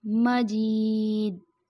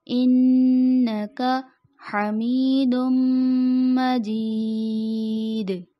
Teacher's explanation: دال آخر میں آ رہا ہے تو اس پہ ہم وقف کر رہے ہیں، تو یہاں پہ قلقلہ ہوگا، آواز پلٹ کے واپس آئے گی۔ عموماً آواز پلٹائی نہیں جاتی جو کہ غلطی ہو جاتی ہے، مجید ایسے، جبکہ درست ادائیگی انکا حمید مجید۔